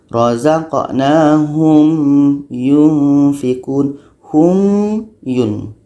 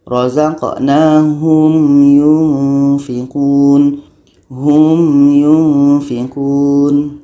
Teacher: Kita baca hum tu bukan panjang, tapi kita meletakkan makhraj mim ni dulu. Jangan kita baca razaqnahum yun. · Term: izhar syafawi